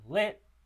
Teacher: It is a high, front, unrounded, lax vowel